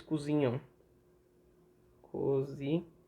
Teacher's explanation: Mas em suma, você só tem que entender que final de palavra, na última sílaba, AM, AN, EM, EN, OM, ON, fique esperto que não é um final comum. É um final com ditongo nasal.